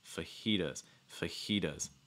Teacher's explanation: stressing the second syllable